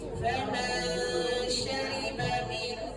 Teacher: Dengung dulu. Nun sakinah bertemu shin tu dengungkan dulu.